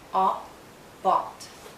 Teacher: It's a short sound and a very open and rounded sound. Make your lips rounded and lower your jaw. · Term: short sound aw